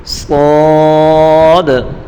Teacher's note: صاد کو بھی تیزی کے ساتھ پڑھیں گے اور پر پڑھیں گے